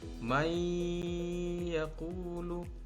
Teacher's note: Ketika nun mati bertemu ya, maka suara nun mati ini dihilangkan dan diganti seperti huruf ya bunyinya, sehingga ya di sini tampak seperti bertasydid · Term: idgham bi gunnah